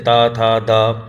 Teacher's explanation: दा ध्वनि का उच्चारण स्थान बोल के देखिए, ता था दा, तो दंत वाला आ गया ये